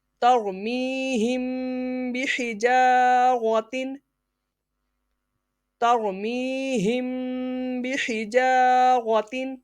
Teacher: میم ساکن کے بعد با اخفاء شفوی یعنی غنہ کریں گے